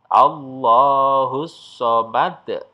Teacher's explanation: Nah, itu ya, ada pantulannya itu tebal ya, pantulannya itu besar. Nah, itu disebut dengan qalqalah kubra.